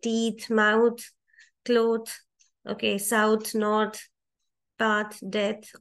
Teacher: when you have the last sound as last two letters as th, those two th will give unvoiced sound